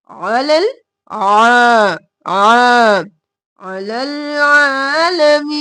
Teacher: आइन गले के दरमियान से